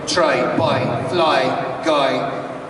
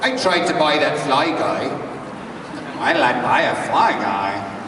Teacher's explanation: in the Irish dialect, the I sound goes to E.